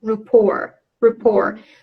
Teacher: So the first syllable, instead of pronouncing the A sound, they pronounce the schwa sound